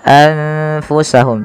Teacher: nunnya disamarkan kepada huruf fa maka menjadi anfusahum tidak lagi dengan jelas suara nunnya · Tidak lagi dengan jelas suara nunnya anfusahum, tapi samarkan ke huruf fa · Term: ikhfa